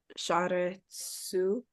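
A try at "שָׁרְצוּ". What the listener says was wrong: Sharetsu. Good.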